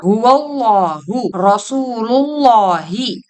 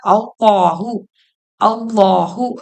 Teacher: அல்லாஹ் என்ற வார்த்தையில் லாமுக்கு முன்னுள்ள எழுத்து ஜபரோ அல்லது பேஷோ பெற்று வந்தால் அந்த லாமை வல்லினமாக ஓத வேண்டும்